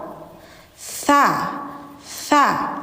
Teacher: tsa tsa lidah ujungnya ditempel di gigi atas jadi kayak digigit